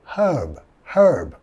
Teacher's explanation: en Inglaterra sí van a pronunciar la H y va a ser un poco más alrededor de herb, ¿ok?